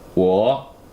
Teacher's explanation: just starts low and goes lower yep so it doesn't actually go up at all uh no